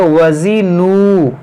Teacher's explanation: یہ زا ہے، اس میں سیٹی ہوگی